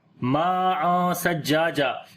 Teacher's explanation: میم کو لمبا کریں گے، الف مدہ ہے اور یہ مد متصل ہے